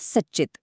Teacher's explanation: बघा, सत अधिक चित. इथे त या व्यंजनापुढे च हे व्यंजन आलं आणि त्यांचा झाला चच्च आणि शब्द बनला सच्चित